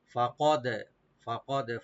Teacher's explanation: ফা ওপেন রাখবেন, কাফ open থাকবে, তাহলে একটু আমরা কলকলা করবো। ফাকদ খাসিরা, খাসিরা, এখানে কোনো টান হবে না, শুধু রা একটু ডিপ হবে।